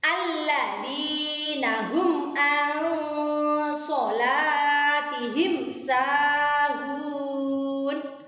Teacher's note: Perhatikan pada bacaan yang mendengung. Nun sukun ketemu dengan huruf shad.